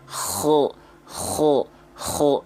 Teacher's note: Mahmusuha fahathahu syakhsun sakat. Jadi huruf kho itu termasuk huruf yang dia punya sifat mengalir nafas. Tapi karakteristiknya harus mendengkur. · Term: hams